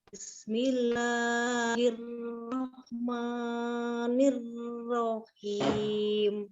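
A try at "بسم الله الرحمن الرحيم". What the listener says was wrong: Oh, jangan berat sekali basmalahnya, dilepaskan. Bismillahirrahmanirrahim.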